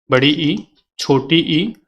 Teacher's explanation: इनमें क्या है, जब उच्चारण करेंगे तो आपको लगेगा कि आधा मुंह ही खुल रहा है। संवृत की बात करें तो इनमें मुंह बहुत कम खुलता है